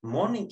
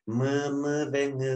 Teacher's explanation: Nazır nereden biliyoruz mesela bunu Nazal seslerde havayı üretirken sesi üretirken hava bizim burnumuzdan çıkar geniz boşluğundan çıkar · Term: Nazal seslerdir